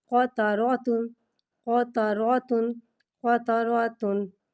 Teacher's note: قاف کو ایک الف یعنی تین مقدار کھینچ کے پڑھیں گے. قاف حرف مستعلیہ ہے لہٰذا اس کی آواز حلق سے موٹی ادا ہوگی. قاف پہ زبر ہے، زبر کو منہ کھول کے ادا کریں گے.